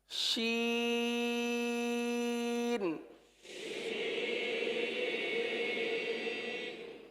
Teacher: जबान के दरमियान और तालु के दरमियान से ये हर्फ अदा होते हैं। जबान का दरमियान और तालु का दरमियान।